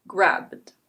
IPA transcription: ɡræbd